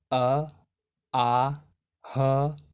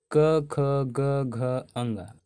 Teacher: कंठ से उच्चारण होता है अ आ ह और विसर्ग और कवर्ग